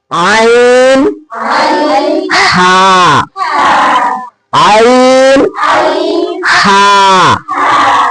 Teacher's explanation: یہ عین اور جو ہا ہے یہ کون سے حلق سے ادا ہوگا؟ وسط حلق سے